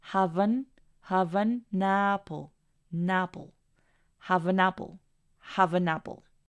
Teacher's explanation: Y ahí se pueden dar cuenta que estamos conectando el sonido de todos ellos, haciéndolos uno solo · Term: connected speech